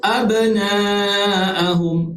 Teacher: Okey, mad wajib muttasil yang mana huruf mad ini bertemu dengan huruf hamzah di dalam satu kalimah. Jadi kita kena baca panjang lebih daripada 2 harakat, sama ada 4 ataupun 5 harakat.